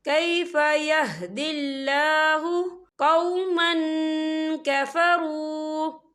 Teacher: اللہ کا نام باریک پڑھا جائے گا کیونکہ اللہ کے نام سے پہلے زیر ہے